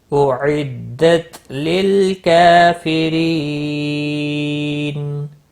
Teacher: وقف کی صورت میں نون ساکن پڑھیں گے، وقف بالاسکان ہوگا، 3 سے 5 الف کے برابر کھینچ کر وقف کریں گے · کاف کے اوپر کھڑی زبر ہے، ایک الف کے برابر کھینچ کر پڑھیں گے۔ ری یا مدہ ہے، ایک الف کے برابر کھینچ کر پڑھیں گے، اور را کو باریک پڑھیں گے زیر کی وجہ سے۔